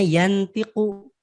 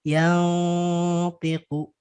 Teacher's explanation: Harusnya yantiku, tapi nunnya agak disamarkan jadi yantiku. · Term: hukum ikhfa